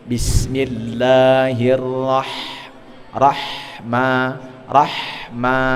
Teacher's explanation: sinnya jangan sampai putus. Bismi sambung kepada mim